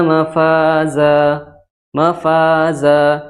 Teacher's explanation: di akhir kata atau diwaakaf maka cara membacanya adalah dengan apa dengan fathah dua harakat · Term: Mad Iwat